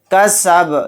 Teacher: با کو ساکن بنا کر پڑھیں گے، اور با ساکن ہوگا تو با کے اندر قلقلہ بھی ہوگا